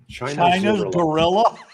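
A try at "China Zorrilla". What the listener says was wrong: No, Zorilla. It's spelled like gorilla, but with a Z.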